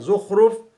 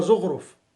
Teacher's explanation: قلب الخاء إلى غين، مثل زخرف تقلب إلى زغرف